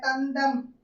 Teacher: வந்து மேல்வாய் பல்லு முடிஞ்சிருது இல்லையா நம்மளுடைய பல்லு அந்த இடத்தை போய் தொடும் பல்லு முடியற இடத்தை போய் இந்த நா சொல்லும்போது தொடும் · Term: தன்னகரம்